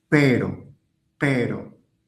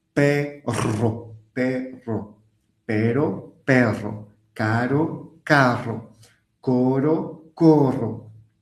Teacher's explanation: quand il est au milieu d'un mot et qu'il s'écrit avec un seul R, il est doux. Pero, pero. Et quand il est graphiquement avec deux doubles R, alors il est beaucoup plus fort.